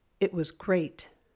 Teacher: We're not going up. We're just saying it louder and it goes up like great.